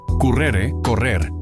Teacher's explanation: la R se dobla y se convierte en vibrante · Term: R fuerte o vibrante